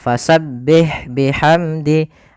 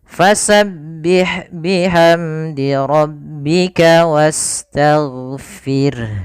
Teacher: pada lafal fasabbih sempurnakan kasrahnya Jangan dibaca e contoh fasabbih bihamdi ini kan tidak menyempurnakan kasrahnya Harusnya kita ada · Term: menyempurnakan harakat kasrahnya